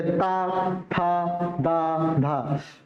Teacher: दंत होता है हमारा जो दांतों में, जिभा हमारी दांतों में टच करती है